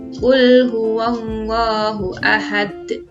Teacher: cara membacanya tidak langsung dipantulkan tetapi berhenti sebentar sekitar dua detik baru dipantulkan pengucapannya juga harus lebih kuat ketika huruf qolqolah kubro diwaqofkan atau